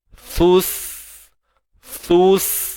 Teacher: Satu huruf sa keluar hujung lidah, kemudian huruf sin tak perlu keluar hujung lidah. Huruf sin ni hujung lidah di belakang gigi sebelah bawah. · Waktu sin tu lidah tarik balik masuk dalam. Jangan dibiarkan gantung lama benar kat luar tu.